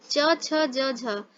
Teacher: च, छ, ज, झ स्पर्श व्यंजन होते हैं, इनमें भी संघर्ष होता है, इनको स्पर्श संघर्षी कहते हैं